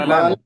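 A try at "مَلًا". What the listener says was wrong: মা লান না, মা টান হবে না, কিন্তু যেহেতু মায়ের উপরে কি আছে, হরকত আছে,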